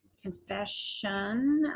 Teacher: Notice our S changes to a sh when we add this ION. That often happens with ION.